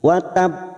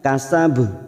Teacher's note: Ini yang dinamakan qalqalah kubra dengan pantulan yang sangat jelas.